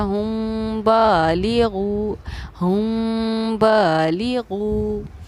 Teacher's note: अगर मीम साकिन के हमारे 3 क़ायदे हैं, इज़हार शफ़वी, इदगाम शफ़वी, इख्फ़ा शफ़वी, जिनमें से ये हमारा है इख्फ़ा शफ़वी का क़ायदा। मीम साकिन के बाद बा है तो इस मीम पर इख्फ़ा भी होगा और गुन्ना भी होगा, इसीलिए हमने यहाँ पर ठहराव किया हुम बालिगू, हुम बालिगू।